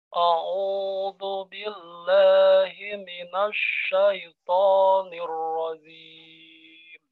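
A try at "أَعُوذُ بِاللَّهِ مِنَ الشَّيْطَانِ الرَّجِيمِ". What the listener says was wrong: Nirrajim, tengah lidah Pak. Jim, ja, ji, ju, jim. Ulangi.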